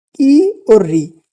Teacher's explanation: जिसको हम होठ को या ध्वनि को आगे करके बोलते हैं, इसलिए इनको क्या कहते हैं? अग्र स्वर